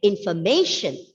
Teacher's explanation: the penultimate syllable is stressed and we have three unstressed syllables · as the letter m follows the letter r there is a tendency for the letter r to go silent